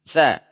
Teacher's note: Sa digigit sedikit. Sa, ujung lidah bertemu dengan ujung gigi seri atas. Jim dari tengah, ya ja.